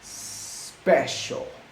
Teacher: the blade of my tongue is closer to the alveolar ridge. Once again, special. Once again, there's no vibration, which means special, and the letter S is voiceless.